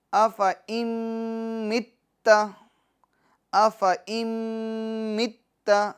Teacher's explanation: یہاں پر بھی ادغام کا قاعدہ لگ رہا ہے کیونکہ نون ساکن کے بعد میم آ رہا ہے، ٹھیک ہے، حروف یرملون میں سے، لہٰذا ہم یہاں پر گنہ بھی کریں گے